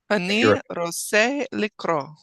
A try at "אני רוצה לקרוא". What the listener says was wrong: Excellent.